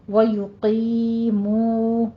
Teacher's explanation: دونوں کو لمبا کھینچنا ہے، 2 کاؤنٹ کرنا ہے. یا مدہ ہے اور واو مدہ ہے. یقیمو نہیں کہنا، یقیمون الصلاۃ.